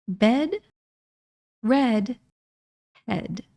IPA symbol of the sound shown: ɛ